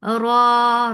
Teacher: Ra is heavy, make it 2 counts long.